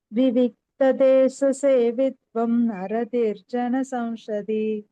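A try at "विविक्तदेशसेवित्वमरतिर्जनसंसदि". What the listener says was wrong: வித்வம்னு முடிக்காம விவிக்ததேசசேவித்வமரதிர்ஜன சம்சதி.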